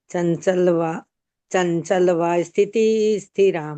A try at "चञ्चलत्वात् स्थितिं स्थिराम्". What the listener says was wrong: चंचलवा नहीं है, चंचलत्वा स्थितिम स्थिराम।